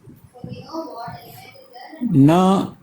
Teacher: Na as in nut, true dental.